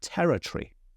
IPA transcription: ˈtɛrətriː